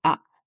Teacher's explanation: And then comes the fourth tone, it is a falling tone. It's like ah.